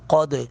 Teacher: دال ساکن پر، یعنی دال کی آواز کو واپس لوٹائیں گے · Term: قلقلہ